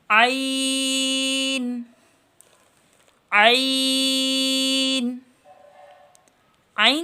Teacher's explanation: وسط حلق سے ادا ہوتا ہے، گلے کا جو درمیان کا حصہ ہے یہاں سے ادا ہوتا ہے